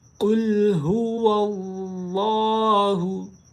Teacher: क़ाफ़ है 2 नुक्तों वाला, इसको मोटी आवाज़ में पढ़ा जाएगा